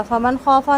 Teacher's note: نون ساکن کے بعد خا ہے، اظہار کریں گے، خا کو پر کریں گے